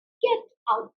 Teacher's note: Now, the stress was on get out. Out was the stress.